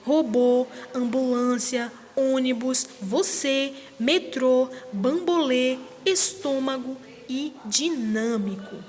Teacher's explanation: o acento circunflexo ele é usado para indicar que a vogal a deve ser pronunciada de maneira mais fechada